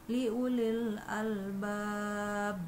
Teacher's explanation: la Ayati liulil al-bab nah pada kata al-bab Hai itu adalah qolqolah kubro sehingga pantulannya harus terdengar jelas dan tidak juga harus terlalu lama Cukup dua ketukan Li Ulil Albab BAB oke Hai pada ayat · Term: qalqalah kubra